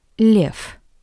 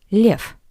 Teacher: the voiced consonant V at the end of this word sounds like the paired voiceless consonant F. V, F.